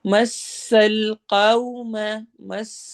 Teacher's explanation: سین میں سٹی والی آواز ہوگی